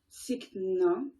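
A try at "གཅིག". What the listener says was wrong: inattention. T'as dit tsic, mais c'est chic.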